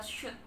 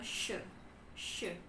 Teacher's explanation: Kemudian ada suara sh, seperti di kata shoot teman-teman. Dia adalah voiceless palatal fricative teman-teman.